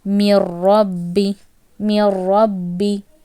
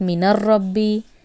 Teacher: You will neglect this noon sound. In idgham, noon goes.